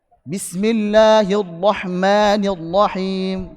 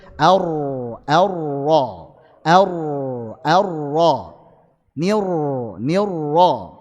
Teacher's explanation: Ini inhiraf huruf ro dia menyimpang ke makhrajnya lam sehingga suaranya kayak lam